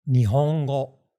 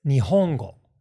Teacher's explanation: not Nihongo, which is more or less flat, but we'll say it as Nihongo with the accent on the ho